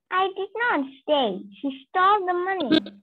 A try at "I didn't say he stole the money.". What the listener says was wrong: The stress is not on say over there. Where is the stress? Where is the stress?